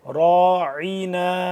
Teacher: راعنا را الف زبر را کو ہی موٹا پڑھیں گے، راعنا، عین کو حالانکہ درمیانی حصے سے ذرا کھینچ کے، راعنا عینا۔